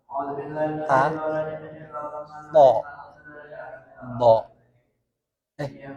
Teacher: Ujung lidah ketemu dengan gusi atas, bagian belakang gigi seri atas. Diwakili dengan ta, to, bo.